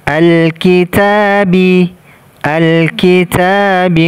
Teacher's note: ta di sini kita baca dua harokat. Taknya kita baca dua harokat.